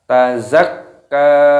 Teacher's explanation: Zakka, kafnya berharokat tasdid, maka ditekan, diidghamkan